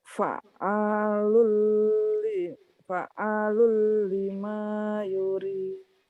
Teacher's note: fa'a agak kayak dihentak. Iya, ada tasdid.